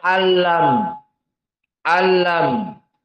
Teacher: masuk nun kepada lam dinamakan idgham lakin biduni gunnah, maka makhrajnya tidak dari hidung dan tidak ada hukum harokatain.